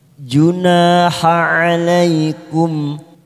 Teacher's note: mim sukun kita baca jelas tanpa mendengung namanya idhar safawi